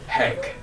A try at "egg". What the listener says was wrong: Egg. There's no H. There's no H. No, No. Egg. Egg.